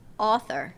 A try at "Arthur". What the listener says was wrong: It's an AU versus an AR. Arthur. Like Archie, Arthur. Like an AR instead of an AU.